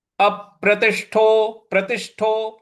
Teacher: इसको बोला जाएगा। अगला पद है अप्रतिष्ठो अप प्रतिष्ठो देखिए अप यहां पर जो हमको प है उस पर बल लगाना है